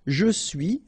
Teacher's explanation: final S not pronounced